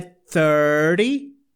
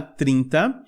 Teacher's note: E aqui no número 30 também, esse T... como ele é antecedido por um R e depois o Y, ele meio que vira um flap, tá? Então a pronúncia é 30, tá?